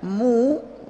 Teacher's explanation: ini bibir dibulatkan karena berbunyi u ya